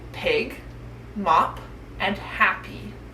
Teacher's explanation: your lips together and letting out a small puff of air this sound is quiet which means you should not feel any buzzing in your throat your voice is off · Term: popping popcorn sound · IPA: /p/